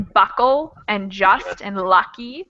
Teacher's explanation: U is kind of our natural schwa sound. U is the sound usually makes the schwa sound.